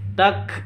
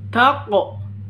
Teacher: tak, seperti itu, ada nafasnya. Kalau yang ini tako, karena ini bacaan kolkolah. Kalau kof, kof sukun itu kan hurufnya kolkolah.